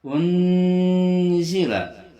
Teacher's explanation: Unzila ini adalah ikhfa awsat, itu berdengung dengan bunyi di antara n dan eng. Itu namanya ikhfa awsat.